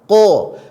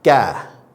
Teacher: Kalau qaf ke dalam, agak di dalam, ko. Sedangkan kaf dia agak di luar, ka.